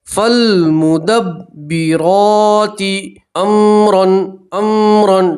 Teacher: فالمدبرات، را کے اوپر کھڑا زبر ہے، را کو پور پڑھیں گے اور ایک الف کے برابر کھینچیں گے۔